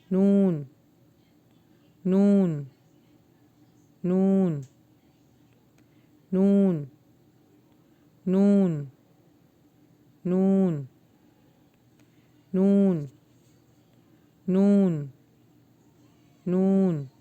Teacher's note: نون کا جو مخرج ہے وہ آپ کی زبان کی نوک سے ادا ہوتا ہے، لیکن نون کو جب آپ پرولونگ کرتے ہیں تو ناک میں سے آواز نکلتی ہے